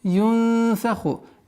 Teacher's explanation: Мягкое произношение ихфа, сокрытие, правило сокрытия в размере двух огласовок. Фа-ху. Обратите внимание, ха, твердый знак, твердый звук, и нужно произнести соответственно.